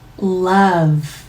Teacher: 윗니 바로 뒤쪽으로 쭉 밀어주신 다음 리을 소리 L 바로 연속해서 턱이 떨어지지 않습니다. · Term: L 소리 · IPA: /l/